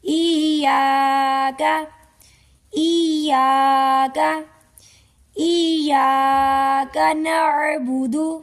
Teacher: یا مشدد ہے، الف کو یا کے ساتھ سختی سے ملائیں گے